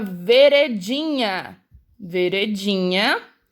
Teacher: a última é um nhá e a mais forte é o din, que é a penúltima. Então, ela é uma palavra paroxítona. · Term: sílaba tônica